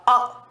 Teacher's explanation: जिह्वा के मध्य भाग से, क्योंकि जो आगे का भाग है वो भी दबा रहता है, बीच के भाग से इसको बोला जाता है, इसलिए इसको मध्य स्वर कहते हैं।